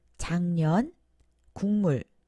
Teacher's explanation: 모두 비음 앞에서 응, 이응으로 발음됩니다. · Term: 비음화